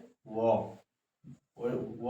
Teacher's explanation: व जो है दंत और ओट दांत और ओट दोनों मिलके तब व बनता है